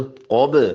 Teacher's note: कौफ मोटा और बा पे झटका. कब बा पे कलकला करे.